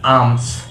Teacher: অর্থাৎ ARMS, এটা এখানে আরটা আমাদের উজ্জ্ব থাকবে, আরটা উচ্চারণ হবে না, অল্প উচ্চারণ হবে